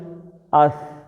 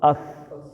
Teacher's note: یہ 3 نقطوں والی اس، زبان کا سرا دانتوں کے ساتھ اس